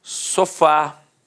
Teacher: Repare que a sílaba tônica é a última e é terminada de fato em a. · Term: oxítona